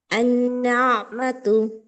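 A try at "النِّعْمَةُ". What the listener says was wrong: বলছিলাম তাসদিদের নিচে হলো একটা আছে আন নিয়া, আইনটা আরো সুন্দর হবে।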